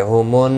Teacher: واو کے اوپر کھڑی زبر ہے، ایک الف کی مقدار کے برابر کھینچ کر پڑھیں گے. ہومن، نون مشدد پر غنہ ہوگا